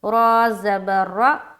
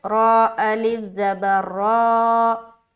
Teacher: रा खींच रहे हैं ना एक अलिफ की मकदार, तो यही है मद्दा